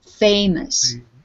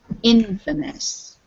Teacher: Infamous yes Infamous the emphasis is on the in Infamous Infamous when we say this word without the in we say famous so the stress is on the F famous but Infamous the stress is on the in Infamous